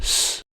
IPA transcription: s